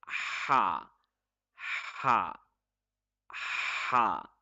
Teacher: The sound is very sharp in it. It's very sharp. We have to use force in the middle of the throat. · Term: letter ha